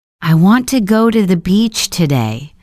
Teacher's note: The stress falls on want, go, and beach. The important words that carry meaning. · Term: sentence stress